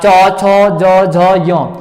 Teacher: च छ ज झ य ये आता आपका तालु ध्वनि पे आता है